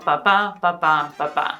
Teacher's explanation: is a unstressed stressed cadence